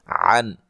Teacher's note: ادا کریں گے، اس سے پہلے حرف پر زبر ہے، عن نون ساکن کا یہاں اظہار ہے، غنہ نہیں کریں گے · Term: نون ساکن کا اظہار